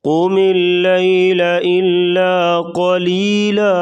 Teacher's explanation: قاف کو موٹا کریں گے، لیل لام کو باریک کریں گے